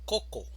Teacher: La mayor fuerza de voz la encontramos en la primera sílaba, coco. Si estuviera en la segunda sílaba diríamos cocó, pero en español no decimos cocó, decimos coco.